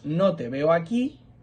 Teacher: Si os fijáis, cuando usamos el pronombre, como es una palabra átona, la juntamos a la siguiente palabra. La fuerza de la pronunciación recae sobre veo, que es un verbo.